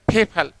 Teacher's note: पै में एच की साउंड ब्लेंड होती है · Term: एस्पिरेटेड